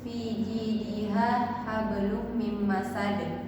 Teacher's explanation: bunyi huruf yang mengeper atau goyang bila ia mati atau bila mati karena dihentikan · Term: qqalah kubra